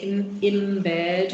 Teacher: The fact that you've got the bilabial feature that gets anticipated on, right? So the n acquires the bilabial feature. It's still a nasal, but you actually end up producing a m sound instead of a n sound. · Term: place assimilation